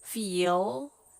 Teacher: the back of your tongue is curling up a little bit well I shouldn't say curling is moving up a little bit